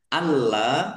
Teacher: Alla lamnya dibaca dobel ada tasdidnya ditekan dan ditahan biar tampak dobelnya. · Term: lamnya dibaca double